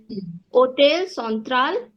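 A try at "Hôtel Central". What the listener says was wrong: There is no t sound also. So it is hotel central.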